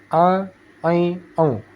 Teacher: Ain letaknya di tengah kerongkongan. A, I, O. Bukan di hidung, tetapi di tengah kerongkongan.